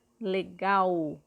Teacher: E nesse caso, ela representa o som da letra U. Quando nós falamos o L, nós percebemos que ele tem o som de U no final dessa palavra.